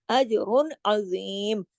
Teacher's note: کلم کلا پڑھیں گے نا، اظہار کریں گے. اجر عظیم، کہیں بھی آواز کو ہم ناک میں نہیں لے کے گئے